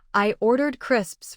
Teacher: The smaller words link, but crisps deserves contrastive stress because it protects the food meaning.